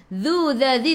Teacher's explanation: hujung lidah keluar pada gigi depan. Dhu 2 harakat ada alif mad asli, baris alif zaidah tak perlu baca.